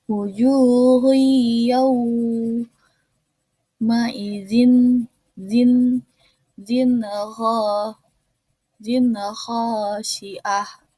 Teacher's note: fathah bertemu dengan waw sukun, yaitu dibaca harflin, yaitu dilembutkan